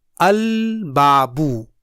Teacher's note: a lunar letter does not get assimilated in the letter preceded by lam of al